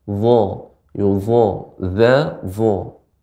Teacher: dia seperti makhrajnya sama dengan zal, namun bedanya dho ini merupakan huruf isti'la, huruf yang tebal